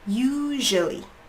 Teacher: So the u is getting the stress, it's the longest sound, and the rest is really quick.